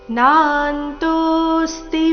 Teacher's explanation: ನಾಂತೋ ಎರಡು ದೀರ್ಘ ಮುಂದಿನ ಸಂಯುಕ್ತ ಅಕ್ಷರ ರಸ್ವ ಇದೆ